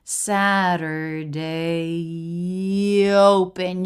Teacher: You're going to want to link right from the A diphthong into the O diphthong. Smooth, no break.